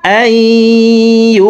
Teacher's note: মা আমারাল্লাহু বিহি আইয়ুসালা, আই এখানে ইদগামে বা গুন্নাহ, নুন সাকিনের পরে ইদগামে বা গুন্নার 4 হরফের একটি হরফ ইয়া আসছে, এই কারণে এই জবরওয়ালা হামজাটি তাসদিদওয়ালা ইয়ার সাথে গুন্নার সহিত মিলাইয়া পড়ব, মাঝখানে জজমওয়ালা নুন বাদ পড়ে যাবে।